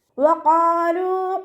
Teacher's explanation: ലാമിൻ്റെ കൂടെ വൗമദ് വന്നു, 2 കൗണ്ട് നീട്ടിക്കൊടുക്കാൻ ശ്രദ്ധിക്കുക കേട്ടോ.